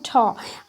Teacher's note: ठ कहाँ से उच्चारित होता है, मूर्धा से उच्चारित होता है